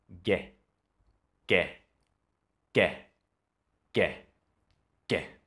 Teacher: the G sound is not an aspirated sound so you're not going to feel that explosion of air coming out your mouth when you put your hand to it common mistakes is that